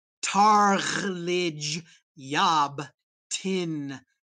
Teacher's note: listen for that gh and that apostrophe cut off and that h that vibrates in the throat and that s that happens in the roof of the mouth